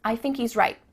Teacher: at the end of the word right there's no T sound